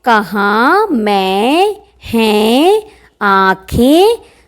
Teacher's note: अनुनासिक स्वर जो नाक से और मुंह से दोनों निकले